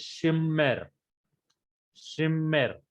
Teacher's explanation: Because of this Dagesh Forte, consonant is doubled.